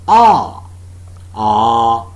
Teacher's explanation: the jaws are considerably separated ah and the lips are neutrally open ah the tongue tip is behind the lower teeth so all